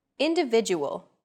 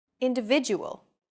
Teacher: The stressed syllable V in individual is deemed more important, so it's pronounced longer than all other syllables.